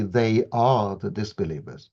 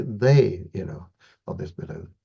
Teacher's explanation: we want to stress the they, you know right at the beginning of the sentence rather than the next word, right? We don't want to say they are the disbelievers.